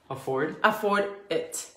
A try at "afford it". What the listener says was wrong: No lo digas tan pegado. it. Afford it.